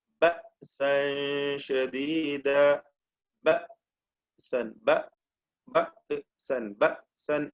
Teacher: ശബ്ദ ധമനികൾ അല്ലെങ്കിൽ ആ ഭാഗം അടഞ്ഞു വരികയാണ്, അടഞ്ഞുകൊണ്ടാണ് ഹംസ ഉച്ചരിക്കുന്നത്. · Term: സാക്കിനത്തായ ഹംസ